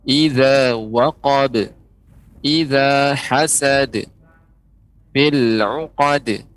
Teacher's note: huruf qalqalahnya misalnya tidak ditambahkan hamzah di akhirnya